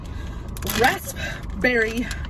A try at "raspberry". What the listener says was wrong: It's raspberry. It just has a P in it. No, raspberry. There's no P sound in raspberry.